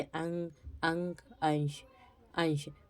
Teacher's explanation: नाक से अधिक सांस निकलती है और मुख से कम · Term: अनुस्वार